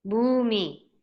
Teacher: First one long u. The second vowel e, short e.